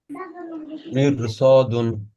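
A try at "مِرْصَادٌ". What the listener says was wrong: ঠিক আছে।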